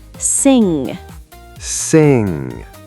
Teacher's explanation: A lot of learners want to pronounce the G separately, like sin-ga, but it's actually one blended sound. So it's not sin-ga, it's just sing with a nasal sound at the end. Exactly. The NG creates one sound that comes from the back of your throat and through your nose. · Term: NG sound